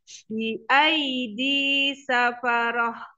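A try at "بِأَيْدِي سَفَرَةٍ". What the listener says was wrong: PR-nya tuh untuk H yang disukun.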